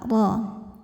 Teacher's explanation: Huruf ra dibaca secara tafkhim karena berharokat fathah, maka dibacanya tebal